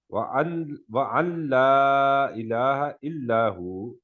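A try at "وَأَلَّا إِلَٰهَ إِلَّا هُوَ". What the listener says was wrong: وَأَلَّا نون پڑھنا ہی نہیں ہے، وَأَلَّا الہ نون جی ادغام کامل ہوگا،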